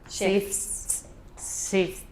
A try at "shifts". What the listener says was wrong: Just all I want is for you to make the S a little bit longer.